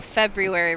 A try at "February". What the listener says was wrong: It's like you really pronounced that R. That's like over-pronouncing labyrinth with like emphasis on the Y.